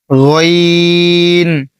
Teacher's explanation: আইনের পরে রয়েছে গাইন এ গাইন যে খড়েছিলেন এই যে উপরে খ এই খ আর গইন এক জায়গা থেকে উচ্চারণ করবেন। এটা হচ্ছে গলার মধ্যখান।